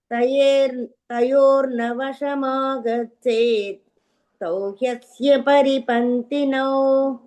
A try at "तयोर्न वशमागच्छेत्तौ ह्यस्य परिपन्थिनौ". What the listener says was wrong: यस यस super.